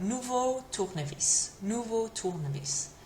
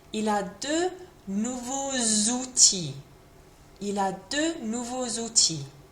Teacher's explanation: that X next to the O makes a bit of a Z sound as a liaison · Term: Z liaison